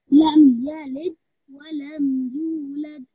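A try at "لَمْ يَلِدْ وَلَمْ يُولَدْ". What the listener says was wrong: Make sure that time I didn't hear your kalkula as well. Remember there's a slight jerking sound when you have a dal with a sukoon or you're stopping on a dal. So, lid, lad.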